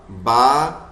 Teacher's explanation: با میں پورے لپس ایک دوسرے پہ آ رہے ہیں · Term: ہونٹوں سے جو ادا ہونے والے حرف